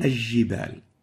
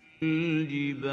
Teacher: There is no idgham or merging of the lunar lam into the jim.